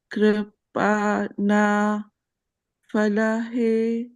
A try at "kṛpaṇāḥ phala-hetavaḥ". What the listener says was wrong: So when there is a H, then you have to pronounce the H also. kṛpaṇāḥ phala-hetavaḥ. So similarly here, kṛpaṇāḥ. Say that. Open mouth.